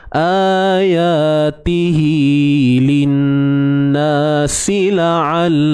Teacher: Bacaan mat 2 harakat yang berlaku disebabkan kita menyambungkan bacaan kita. Dan dibaca dengan kadar qasrun, qasirah, pendek 2 harakat. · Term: mat silah qasirah